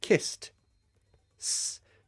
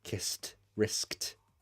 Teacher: That's an unvoiced sound. Kiss. S. There's no vibration in the throat. Therefore, it's an unvoiced sound. Therefore, the ed after sounds like t.